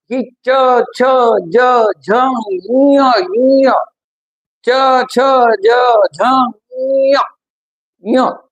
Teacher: तालूपटाला जीभ स्पर्श करते तालूपटाला स्पर्श करते तुमची प्रसरण पावते आहे आणि वरचा तालूपट त्याला प्रेस करते आहे · आपली जीभ आहे आपले जे दात आहेत दाताच्या हिरडे आहेत दाताच्या ज्या हिरडे आहेत त्याच्या किंचितवर त्याच्या किंचितवर जीभ प्रेस होतो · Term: तालव्य